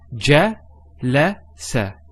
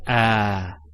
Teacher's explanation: And notice we don't elongate. There's no elongation of the a sound. So we don't say ah like in for example when we say the word car car.